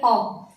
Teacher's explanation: जब हम अ का उच्चारण करते हैं तो जीभ के मध्य हिस्से का हम प्रयोग करते हैं, इसलिए ये मध्य स्वर है।